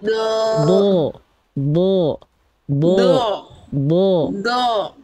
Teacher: jadi bunyi vokal o-nya itu pangkal pangkal lidahnya diangkat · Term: Huruf tebal